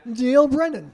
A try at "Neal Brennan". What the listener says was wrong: Yeah, not Deal Brennan. It's not Deal. It's Neal Brennan. Yeah, Brennan.